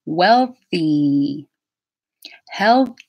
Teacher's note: for wealthy you'll notice I get my tongue blade ready for the L I'm not doing the L inside my mouth